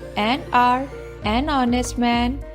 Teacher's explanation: This is because these words begin with a vowel sound, as the initial consonant H is silent and is not pronounced